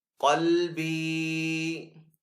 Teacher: कॉफ को पुर पढ़ेंगे। आगे हरूफ मद्दा है तो इसको एक अलिफ दो हरकत के बराबर खींच कर अदा करेंगे।